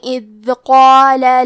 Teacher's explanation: کلمت اذ میں حرف الدال پہ جزم ہے تو ہمیں دال کو ظاہر کرنا ہے۔ کلمت قال میں قاف ہے اور اس کے بعد مد الف ہے تو ہم یہ دونوں حرف کو بھاری آواز میں پڑھیں گے، قال۔